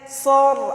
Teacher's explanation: Kemudian sor, ada ro sukun sebelumnya hurufnya berharokat fathah yaitu ro-nya ro tafkhim atau ro tebal. Cara membacanya dengan mengangkat pangkal lidah.